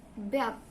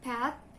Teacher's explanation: bed, the B sound is voiced, and pet, the P sound is voiceless